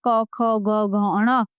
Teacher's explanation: क वर क्योंकि ये कंठ से बोले जाते हैं।